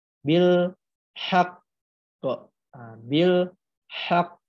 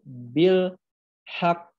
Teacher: Nah, jadi di sini teman-teman ada perubahan lagi, yang mana ketika ada tasdid teman-temanku sekalian, itu tuh tanda wakaf atau tanda berhenti, baik itu di akhir ayat ataupun di tanda wakaf, itu suaranya ditahan 2 harokat, lalu diikutin qalqalah